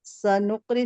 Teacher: نون کو قاف سے ملا کر پڑھیں گے. قاف پہ قلقلہ ہو رہا ہے کیونکہ یہ جزم کے ساتھ آیا ہے. اور را کے نیچے زیر کی حرکت ہے، اس کو جلدی پڑھیں گے.